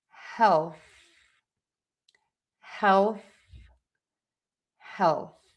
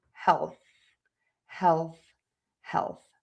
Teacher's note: that is the th sound where you really want to stick the tongue out of the mouth and keep the air moving over the tongue.